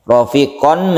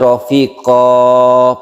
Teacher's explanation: Disebut mad iwad, iwad artinya ganti, tanwin ini diganti menjadi mad. Tanwin berubah menjadi mad, jadi suaranya itu dipanjangkan karena sudah dirubah. Rafiqon menjadi rafiqo, panjang ya.